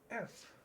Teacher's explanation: উপরের দাঁত এবং নিচের ঠোঁট